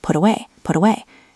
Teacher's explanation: The T in put sounds like a soft D in American English pronunciation, or a crisp T in British.